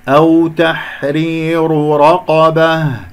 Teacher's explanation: راء الأولى مرققة لأنها مكسورة، راء الثانية من تحرير مفخمة